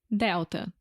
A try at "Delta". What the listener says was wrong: Quase igual, mas também dá para ver quando tem a letra L, quase sempre vira o som do U em português.